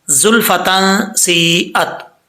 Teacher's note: زا جو ہے حروف صفیریہ میں سے ہے، اس کو سیٹی کے ساتھ پڑھا جائے گا